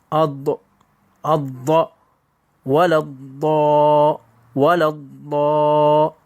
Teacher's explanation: വരുന്നത് അതും നാവിന്റെ അറ്റത്തുനിന്ന് വരുന്ന രൂപത്തിലാണ് മലയാളത്തിൽ നാം ഉച്ചരിക്കാറുള്ളത് അതുമല്ല മറിച്ച് നാവിന്റെ സൈഡിൽ നിന്നാണ് ഈ അക്ഷരം വരുന്നത്